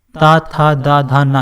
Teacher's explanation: जो हमारी जीभ है वो हमारी कहाँ लग रही है, दंत से, दांतों से लग रही है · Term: ता वर्ग